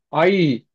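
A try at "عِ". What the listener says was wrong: ஆய். ஐ அல்ல, அந்த வளைஞ்சு வரணும். ஆய். ஆ. ஆய். ஆய். ஆய். ஆய். அந்த அந்த சொல் வளையுது இல்லையே.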